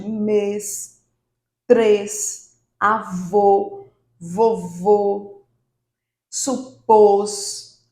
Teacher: o acento circunflexo ele vai marcar a sílaba tônica de algumas palavras que tem um som mais fechado